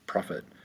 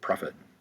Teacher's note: Profit, 2 syllables. Profit. First syllable is the accented one.